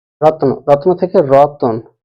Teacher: অ যোগ ত যোগ ন যেহেতু এটা যুক্ত অবস্থায় আছে তাই ত এর পরে কোন স্বরধ্বনি এলো না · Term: স্বরভক্তি